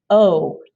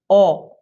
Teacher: But in Spanish, it's just O. Don't move your lips at all.